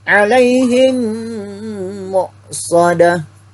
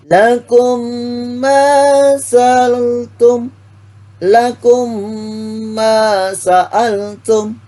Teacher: Jadi bacaan panjang, bacaan hukum mim, idgham mimi atau idgham bersama si lain ini adalah 2 sampai 3 harokat. Cara bacanya suara mim itu mati ke dalam huruf mim hidup. Jadi mimnya itu tetap mimnya mati masuk ke huruf mim hidup. Jadi mendengung.